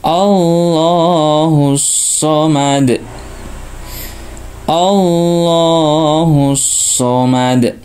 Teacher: lam tebal di sini ya depan fathah maka dibaca tebal